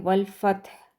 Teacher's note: ہا جو ہے اس کا ساؤنڈ پتہ چلنا چاہیے کہ آپ نے ہا اینڈ میں پڑھا ہے